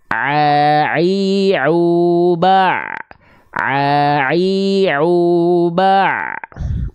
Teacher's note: Kalau ain dari tengah tenggorokan.